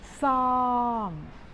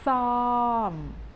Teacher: we pronounce with the S sound as you have in English but make it a little bit longer and it is a falling tone